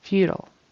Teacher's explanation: either way you say it the emphasis is on the first syllable